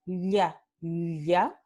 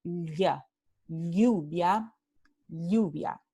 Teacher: Este fonema es lateral palatal